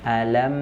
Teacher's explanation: dari makhrajnya ya Mak makhraj huruf mim ya Ma ya Ma ini dari dari syafatain dua bibir tapi ketika kita ketika dia sukun maka dia akan tertutup ya menyentuh antara dua bibir tadi alam Nah jangan kita lepaskan dari makhrajnya terlebih dahulu sebelum